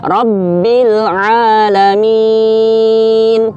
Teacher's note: Yang penting masuk huruf ain tidak menyerupai huruf hamzah